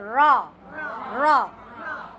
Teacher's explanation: ரா சொல்லும் பொழுது நாக்கு மடக்கி சொல்லணும்